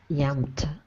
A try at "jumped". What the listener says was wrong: Remember to pronounce the J in English. So it's jumped. Jumped.